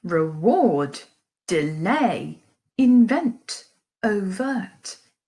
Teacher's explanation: an unstressed and then stressed syllable · it's a quieter first beat and a louder second beat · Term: I am, iamb